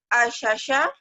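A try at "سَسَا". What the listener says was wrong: Sa ujung lidah, asasa.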